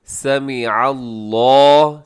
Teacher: لقد، آگے سمع اللہ، اس میں عین کا ذرا زیادہ خیال رکھیے گا، سمع اللہ نہیں ہوتا بلکہ سمع اللہ۔ لفظ اللہ کو موٹا پڑھیے گا، تھوڑا سا اسے لمبا بھی کیجیے گا